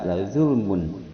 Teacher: lazulmun ada tanwin domah menghadapi ain. Ini hukum bacaannya idhar halqi, yang mana dibaca jelas lazulmun. Lazulmun azim mad arid lisukun yang panjangnya antara 2 sampai 6 harokat.